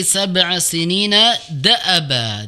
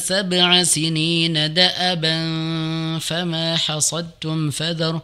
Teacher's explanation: Ya perhatikan di sab'a sinina da'aba. Jadi da'a, A-nya di situ pendek ya Ibu ya, jangan dibaca da'aba tadi seolah-olah terbaca panjang, harusnya pendek ya